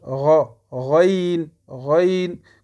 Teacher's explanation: Le raïn et le kha, c'est à la même endroit qu'on le prononce. C'est en haut de la gorge.